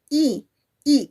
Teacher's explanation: Y por eso el volumen que cuando pronunciamos A es mucho más fuerte que escucha cuando pronunciamos, por ejemplo, la vocal I, I. Cuando yo digo I, ya no se abre mi boca mucho, sino ahora se contrae, se cierra.